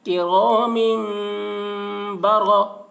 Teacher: کو اقلاب کہتے ہیں کہ را میم با، را زبر را، را کے اوپر زبر ہے اس لیے را کو پر پڑھیں گے کرام برا، را زبر را، یہاں پر را کے اوپر زبر